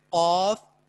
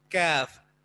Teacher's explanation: تو قاف میں زبان بالکل اس کوے کے ساتھ ملتی ہے اور کاف میں تھوڑا سا آگے منہ کی طرف اوپر تالو سے ٹچ ہوتی ہے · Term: حروف لہاتیہ